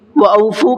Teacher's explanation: وَأَوْفُوا کا فا کو کھینچ کر کے پڑھنا ہے، اس لیے کہ یہاں پر واو مدہ کا قاعدہ ہے